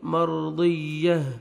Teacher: را ساکن سے پہلے فتحہ، را کو پر کریں گے، مرضیہ، جب سٹاپ کریں گے تا کو ہاں میں چینج کریں گے، ہاں کا ساؤنڈ آنا چاہیے، مرضیہ۔